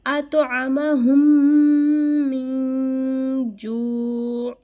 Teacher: اطعمہم من جوع، یہاں پہ ہم نے من نہیں پڑھا، یہاں پہ ہم نے من کو کلیئر پروناؤنس نہیں کیا، یہاں پہ ہم اخفا کریں گے، نون کو ہم چھپائیں گے ناک میں · یہاں پہ میم مشدد ہے، یہاں پہ غنہ ہوگا